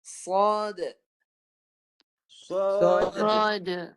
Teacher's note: Ada qalqalah, ada pantulan dal